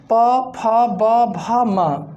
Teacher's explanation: जब हम इनका उच्चारण करते हैं तो हमारा दोनों ओठ क्या होता है? दोनों ओठ स्पर्श करता है। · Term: ओष्ठ ध्वनि